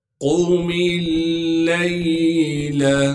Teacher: یا ایہا المزمل قم اللیل، قاف کو موٹا کر کے پڑھیں گے، کیونکہ قاف موٹے حروف میں سے ہے۔ میم کو لام سے ملائیں گے، اس لیے کہ لام پر تشدید ہے۔ میم لام زیر مل، پھر لام پر زبر ہونے کی وجہ سے لام کو آگے ہم یا ساکن سے ملا دیں گے، اس لام کو ہم بغیر کھینچے پڑھیں گے۔